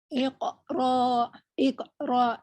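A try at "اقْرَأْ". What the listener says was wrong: Cuman yang awal masih agak berat. Iko, coba. Iko. tidak terlalu ditahan. Tidak terlalu ditahan. Kata kuncinya O ya. Iko. Iko, coba.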